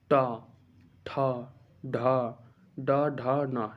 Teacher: जिन वर्णों का उच्चारण मूर्धा से बोले जाते हैं उन्हें मूर्धन्य कहते हैं